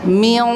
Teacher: Miong karena lidah kita sudah mundur, sudah mendekati huruf qaf. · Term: ikhfa